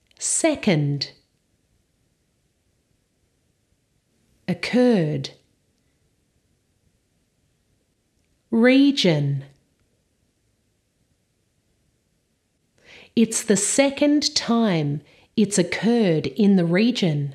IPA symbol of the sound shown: ə